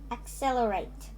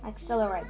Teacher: it has four syllables. The syllables are accelerate, and the stress is on cell.